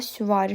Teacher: süvari sözündə ü, i incə a qalın saitdir. Ahng qanun pozulub.